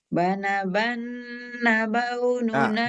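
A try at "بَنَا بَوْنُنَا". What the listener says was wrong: ban kurang tahan, Bu, kurang tahan tetap. Nah, ini Ibu masih kurang, Bu, yang ini. Yang ini masih kurang. Yang ini sudah oke, yang bawah. Ini masih kurang. Terlalu tergesa-gesa. Bana.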